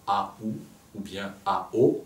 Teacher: quand 2 voyelles se suivent, on les dit dans la même émission de son, c'est-à-dire qu'on en fait une seule syllabe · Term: diphtongue